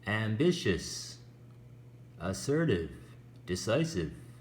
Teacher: we stress the second syllable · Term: word stress